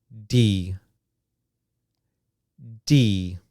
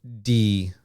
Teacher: When I make this sound, D, similar to T, my tongue is going to go up and it's going to touch the back of my teeth. Okay, so I'm going to tap with my tongue, tap, D, D, okay, D.